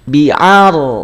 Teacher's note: yang naik adalah pangkal lidahnya, bukan bibirnya yang maju